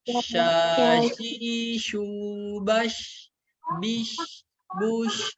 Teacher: makhrajnya itu dari tengah lidah kita menempel ke tengah langit-langit atas. Jadi jangan monyong, enggak monyong juga sebenarnya bisa gitu ya. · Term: huruf shin